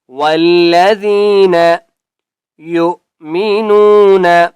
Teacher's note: زال کو ہم نے نرمی سے پڑھنا ہے اور زال کے آگے یا ہے، اس لیے ہم نے زال کو ایک الف کی مقدار کھینچ کر پڑھیں گے